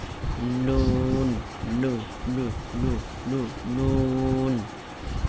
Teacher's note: জিহ্বার আগা বরাবর মানে উপরের তালু সঙ্গে লাগাইতে হবে